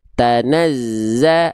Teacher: Kalau yang selain nun dan mim, dia cukup tekan tanazzah karena nggak ada suara yang harus melipir ke hidung dulu.